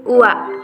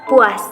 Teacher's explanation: Terjadi bila vokal kedua diucapkan dengan posisi lebih rendah daripada yang pertama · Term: diftong turun